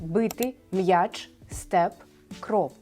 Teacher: В українській мові відбулося ствердіння губних приголосних наприкінці слова чи передприголос.